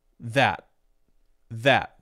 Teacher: we'll use what we call a stop t or what I call a stop T so the voice will stop there